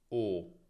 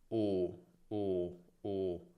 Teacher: O è una vocale medio-alta, posteriore e arrotondata. La lingua è indietro e abbastanza in alto. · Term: O chiusa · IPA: /o/